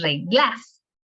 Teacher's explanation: sabemos que entonces la sílaba tónica es re, porque es reglas